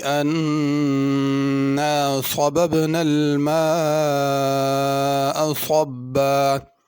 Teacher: انا کے نون پہ غنہ کرنا ہے